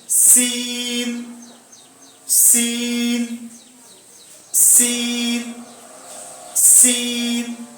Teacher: ये हर्फ भी दांतों के मिलाने से ही अदा होता है।